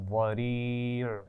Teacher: ضریع آخر میں عین کے مخرج پہ وقف کریں گے